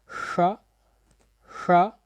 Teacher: दूसरा एक मूर्धन्य श होता है जिसका उच्चारण आप करते हैं श श